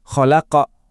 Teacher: Gema di huruf qof di akhir itu kerasa lebih mantap dan tebal. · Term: qalqalah kubra, qalqalah kubro